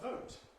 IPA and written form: vəʊt (vote)